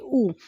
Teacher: ऊ का जो उच्चारण स्थान हो रहा है वो ओष्ठ से हो रहा है